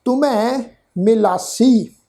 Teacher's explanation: ਤੱਤੇ ਨੂੰ ਔਂਕੜ ਦੀ ਮਾਤਰਾ, ਮੰਮੇ ਅੱਖਰ ਤੇ ਦੁਲਾਵਾਂ ਦੀ ਮਾਤਰਾ, ਹਾਹੇ ਹਾਹਾ ਜਿਹੜਾ ਅੱਖਰ ਆ ਜੀ ਮੰਮੇ ਅੱਖਰ ਤੇ ਦੁਲਾਵਾਂ ਦੀ ਮਾਤਰਾ ਵਾਂਗ ਉਚਾਰਨ ਹੋਏਗਾ। ਹਾਹਾ ਅੱਖਰ ਮੰਮੇ ਅੱਖਰ ਦੇ ਪੈਰ ਵਿੱਚ ਲਾ ਕੇ ਉਚਾਰਨ ਹੋਏਗਾ, ਮੰਮੇ ਅੱਖਰ ਦੇ ਪੈਰ ਦੀ ਟੋਨ ਨੂੰ ਭਾਰਾ ਕਰਕੇ